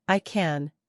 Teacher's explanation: if you're saying I can the a is much shorter and flatter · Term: short a